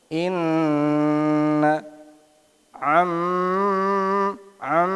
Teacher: nahan bacaan dengan sekian harakat tambah di hidung suaranya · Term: gunah